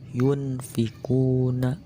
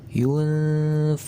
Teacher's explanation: Yunfikuna, kan asalnya kalau tidak memakai hukum ikhfa yunfikuna. Nah, kalau memakai hukum ikhfa, baca nun matinya jadi samar serta memakai gunnah